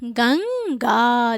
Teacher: ये बिंदी अनुस्वार है और इसका उच्चारण नाक के बल हो रहा है, नाक पे बल जा रहा है · गंग अंग निकल रहा है ना, तो इसके उच्चारण में नाक पे बल जा रहा है यहाँ पे ना, तो ये क्या है, अनुस्वार है।